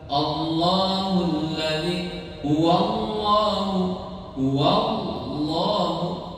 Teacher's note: Allah, huruf itu berat, lam di lafaz Allah itu yang takim ya, itu dibacanya harus berat.